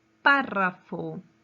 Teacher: su mayor fuerza de voz está en la antepenúltima sílaba